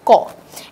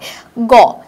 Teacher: উচ্চারণ করার সময় আমাদের কিন্তু ক এর সাথে একটা অ উচ্চারিত হয়, গ এটার সাথেও কিন্তু একটা অ উচ্চারিত হয়।